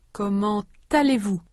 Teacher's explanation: A consonant Z is pronounced between les and américain, les américains, and a consonant T is pronounced between comment and allez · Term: liaison